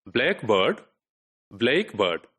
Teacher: So which syllable is to be stressed, right? And typically in this word, it is the black which is stressed